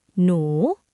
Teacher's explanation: Contoh, nu, nonu, konsonan awal kelas rendah. Sarak u, vokal panjang, suku kata hidup. Maka nadanya jadi nada bangkit atau siang catawa, bukan nada datar lagi kerana ada hor hip di depan nonu.